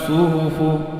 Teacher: sad pangkal lidah terangkat ini tebal